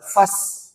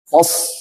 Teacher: Ini dia hamasnya. Kalau so beda dengan sin ya. Jangan baca fas, tapi fos. Tebel. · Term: huruf so